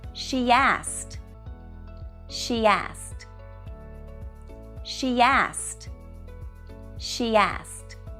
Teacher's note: we would Connect using the Y sound